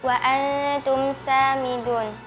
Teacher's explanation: Mim sukun bertemu dengan huruf sin dibaca jelas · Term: Izhar syafawi